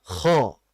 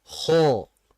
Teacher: Dengan menaikkan pangkal lidah. Gunanya apa? Pangkal lidah untuk menebalkan.